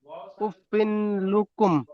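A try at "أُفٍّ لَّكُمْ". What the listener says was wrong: উফিন না, উফিল, ফিল, ফাদুল আমজের ফিল। লাটা টান হলে ভুল হবে, উফিল লাকুম।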